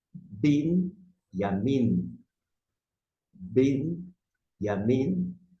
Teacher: B N aqui não vai ter esse somzinho do E.